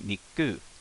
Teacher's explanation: So there's a small pause and then a start pronunciation of the next syllable. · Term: glottal stop